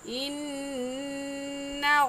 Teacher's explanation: इन्ना में नून मुशद्दद है और नून मुशद्दद पर हमेशा गुन्ना करते हैं, और गुन्ना एक अलिफ की मिक़दार नाक में आवाज़ छुपाने को गुन्ना कहते हैं।